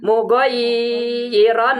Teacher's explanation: Kalau mugoy ditahan karena musyaddad